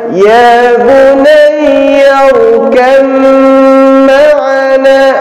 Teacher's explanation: Karena ketika ada huruf ba bertemu dengan huruf mim, ba yang pertama sukun, mim yang keduanya berharkat, maka kalah huruf ba. Tidak terdengar huruf qalqalah. Jadi bacanya ya bunayya rukam ma'ana, langsung diidghamkan ke mim.